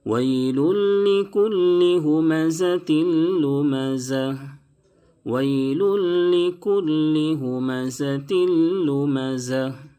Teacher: زا کی ادائیگی میں، دونوں جگہ زا کی ادائیگی میں تھوڑی سی سیٹی جیسی آواز نکلنی چاہیے تاکہ زا اپنی حالت پر باقی رہے۔ بعض مرتبہ زا میں سیٹی کی آواز نہیں نکلتی ہے تو زا ذال سے بدل جاتا ہے۔